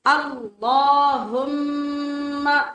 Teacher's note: اللہم یہ غلط ہوگا، اللہ ایک تو لام پور ہے، دوسرے کھڑی زبر کی وجہ سے لمبا ہے، تیسرے میم کے اوپر شد ہونے کی وجہ سے ہم غنہ کریں گے۔ غنہ کہتے ہیں ناک میں آواز لے جا کے تھوڑا لمبا کر کے پڑھنا۔